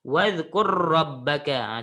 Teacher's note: Tapi cara sebut hanya satu ra sahaja.